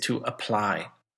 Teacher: Now again, it has 2 syllables, and the word stress, did you hear it? It was on the second syllable, to apply. Okay, so I apply for a job, and I then have an application.